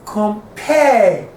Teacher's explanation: The com is unstressed and the pair is stressed.